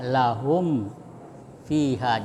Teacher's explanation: Jadi, jadi mim sukun ya berhadapan dengan huruf fa ya. Membacanya mim disuarakan dengan terang dan jelas di bibir serta mulut tertutup. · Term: izhar syafawi